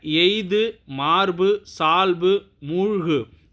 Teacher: ஒரு மாத்திரையிலிருந்து அரை மாத்திரை அளவிற்கு குறைந்து ஒலிக்கும் உகரம் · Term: குற்றியல் உகரம்